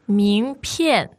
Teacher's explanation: 名片, second and fourth tone. Second tone and fourth tone.